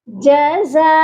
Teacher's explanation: الف کے اوپر بڑی مد ہے اور یہ مد 5 الف کے برابر لمبا کر کے پڑھی جاتی ہے